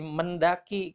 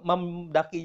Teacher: D itu di dental, eng itu di belakang ya, di palata, di velar, sehingga meng ini harus berubah menjadi men, sama-sama dental, N dental, D pun dental. Jadi lebih enaknya mendaki.